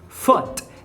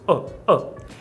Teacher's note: Foot é com o, ferradura de cavalo, um U metido e curto, o. E food é com o U de bico e prolongado, food.